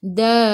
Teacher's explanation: Sebelum ra ada baris ada alif kena baca tebal. Tafkhim.